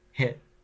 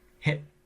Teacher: there's actually a break in the air hit there's a catch in the throat where that's right the